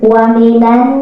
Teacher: ada nun bertasydid atau bersyiddah. Ini adalah hukum bacaannya gunnah. Jadi wa minan diketuk 3 ketukan